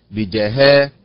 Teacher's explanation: كذلك بجهالة، بجهالة أول الكلمة ثلاث حركات فسكون، بجهاء. إذن النبر على الحركة الأخيرة وهي حركة الهاء